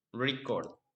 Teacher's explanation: But when we use the word record as a verb, the stress is on the second syllable, record.